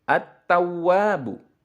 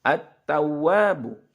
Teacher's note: Tidak, ya. Alif lamnya jangan diucapkan. Jadi langsung ke huruf ta. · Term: alif lam syamsiyah